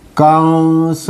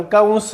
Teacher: हा अनुस्वार जो आलेला आहे तो व या व्यंजनासाठी आलेला आहे व चा उच्चार लोप होतो आणि तो नाकात होतो म्हणून कंस अस म्हणतो